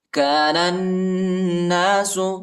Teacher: كان الناس نون کو اس نون کے ساتھ ملائیں گے، ٹھیک ہے؟ نون پر شد آئے اور غنہ بھی کریں گے